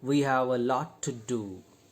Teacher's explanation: There are 2 T sounds, but in a connected speech, they become single. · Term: gemination